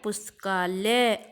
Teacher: पुस्तक जमा आलय, पुस्तक का अ और आल्य का आ मिलकर बन गया पुस्तकालय, आ की ध्वनि आ गई